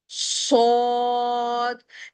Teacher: صاد، یہ زا سین کے گروپ سے ہے، ہماری زبان کی گولائی نیچے والے سخت وسوروں پر لگتی ہے اور وسل پیدا ہوتی ہے اور اس حرف کو موٹا ادا کیا جاتا ہے جس کی وجہ سے ہونٹ اوول شیپ میں آ جاتے ہیں